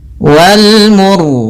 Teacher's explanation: Pada bacaan wal mursalati, di sini ini ada alif lam qamariyah, yaitu alif lam yang ditulis dan dibaca huruf lamnya dengan jelas, yaitu adanya huruf alif lam bertemu dengan mim. Kemudian ra-nya di sini kita baca dengan ra tebal disebabkan karena sebelum huruf ra yang disukunkan ada huruf yang dhammah